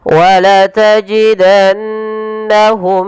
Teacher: kemudian bertemu Hamzah ini kita namakan dengan izhar syafawi dan yaitu harus dibaca dengan jelas suara mimnya tanpa ada penahanan · ini perlu ditahan suara bunyi nunnya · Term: gunah